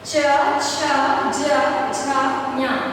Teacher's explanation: च वर्ण का उच्चारण जो है वो तालु से